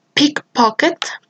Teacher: the phoneme p that is voiceless, fortis, bilabial, and plosive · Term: aspirated allophone